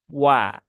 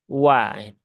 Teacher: Huruf waw ini adalah satu-satunya huruf yang monyong ya, walaupun dia berharokat fathah, tapi monyongnya hanya di awal saja ya. Wa. Nah, jadi monyong dulu baru dibuka.